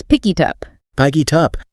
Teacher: The K from pick jumps over and attaches to it. The T from it jumps to up. So it becomes picky tup. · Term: Linking